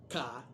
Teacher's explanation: Estos fonemas consonánticos son la K, ¿ve? La lengua, la parte de atrás de la lengua pega del velo del paladar. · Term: velares